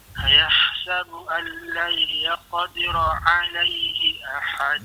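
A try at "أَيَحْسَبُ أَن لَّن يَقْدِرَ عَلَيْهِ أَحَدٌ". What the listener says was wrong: Dengung sikit. Ayahsabu allai di situ hukum idgham ma'al gunnah.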